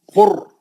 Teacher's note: अब पेश के भी बहुत आते हैं, और भी, जैसे आप एक खास आपको बता रहा हूं, कुरआन, अलिफ पे खड़ा जबर है, कुरआन, कुर, पतला नहीं पढ़ना ये रा को, क्यों, हाफ पे पेश है